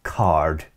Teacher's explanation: back then, most of Britain would have pronounced the R in words like card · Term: rhoticity